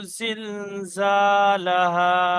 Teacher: জাল, প্রথমটা জাল, তারপরে যা। জালটা একটু হালকা করে উচ্চারণ হবে, তারপরে জাটা একটু চেপে আর সিটি মতন আওয়াজ হয়ে যাবে। এখানে দুটো যা আছে, তারপরে ফের এখানে শেষেও দুটো যা আছে।